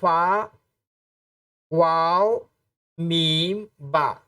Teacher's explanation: फ़ा, वाव, मीम, बा labial वाले हैं, यानी इसमें हम होंठ का इस्तेमाल करते हैं। जैसे फ़ा यानी नीचे के होंठ की तरी, जब दोनों होंठ मिलाते हैं तो फ़ा होता है।